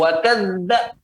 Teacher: zal memiliki sifat lemah. Jangan ditekan di situ. Kalau ditekan dia tidak akan mengalir soalnya.